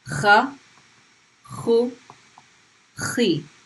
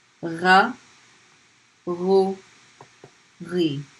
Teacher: the kha is a much harsher sound, and the gha is a vibrating sound